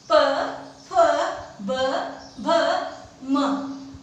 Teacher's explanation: इसके बाद में ओष्ठ्य यानी दोनों होठ, मतलब इनका उच्चारण करते हैं हमारे दोनों होठ बंद होते हैं और खुलते हैं